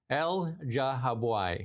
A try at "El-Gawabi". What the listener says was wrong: El-Gawabi, I would say. Because usually the GH is not, it's not a soft G. It's usually a hard G.